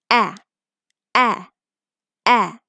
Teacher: the second sound is a a is a short V sound mouth open chin drops teeth apart tongue pressing gently against the inside lower mouth and it's a quick sound